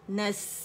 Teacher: نس سین کا ہمس رخاوا اور صفیر شو کرنی ہے